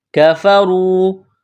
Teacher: را کو موٹا کرنا ہے، پیش ہے، واو مدہ ہے